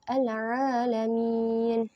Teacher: kemudian yang keempat adalah Mad Aril sukun Mad Aril sukun ini Mad yang berada di Akhir kata yang berhenti maka dibaca panjang 2 4 sampai 6 harakat